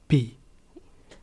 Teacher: this is without aspiration and without voicing